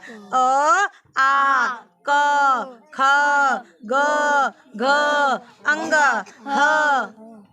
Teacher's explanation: केवल आवाज कहाँ से आई? गले से। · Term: कंठ वाले